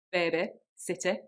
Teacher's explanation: so for example in words like Funny Money City baby those words where you'd hear more of an e sound normally that gets changed to more of an i